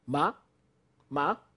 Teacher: This ma starts from a low pitch and rises fast and short.